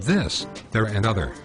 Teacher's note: I show them how to make the voice th sound by putting their tongue to the lower edge of their upper teeth and allowing some vibrated air to pass between the tongue and teeth